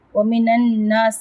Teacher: نون کو نون سے ملا کے مدغم کر دیا ہے، یہاں پہ نون مشدد ہے